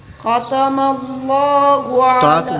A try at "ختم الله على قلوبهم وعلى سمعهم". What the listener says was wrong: موٹا نہیں کرنا ختم الله على قلوبهم وعلى سمعهم